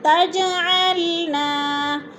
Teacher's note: ہے تو الف مدہ، لا پہ پھر الف مدہ، تجعلنا، تج جیم ساکن ہے اور حروف قلقلہ میں سے ہے تو ادھر قلقلہ کریں گے یعنی جیم کو ہلا کر پڑھیں گے